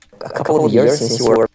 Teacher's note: The word since, I think you also moved from kit towards fleece.